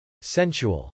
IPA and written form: sˈɛnʃəwəl (sensual)